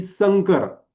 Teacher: अनुनासिकाचा उच्चार हा क वर्गीय व्हायला पाहिजे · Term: क वर्गीय अनुनासिकचा